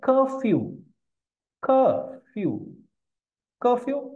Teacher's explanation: we have two syllables the first one is stressed second is unstressed